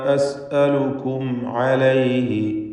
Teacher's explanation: വമാ അസ്അലുക്കും അലൈഹി, അസ്അലുക്കും എന്നതിലെ സാക്കിനത്ത് മീമും ശേഷം ഐനുമാണ്. ഇൽഹാർ ഷഫവി നൽകി മണിക്കാതെ മീമിനെ വെളിവാക്കണം.